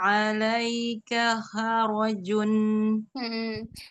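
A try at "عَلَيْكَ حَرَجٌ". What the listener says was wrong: Haknya kurang ke bawah nih, Umi. Jangan kha, kha. Kalau kha, dia di kho. Alaika ha, ha. So pikir di huruf ha, poli itu ah. Alaika ha, alaika harajun.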